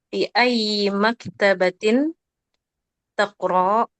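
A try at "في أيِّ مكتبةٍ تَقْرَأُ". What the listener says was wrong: Takro pendek.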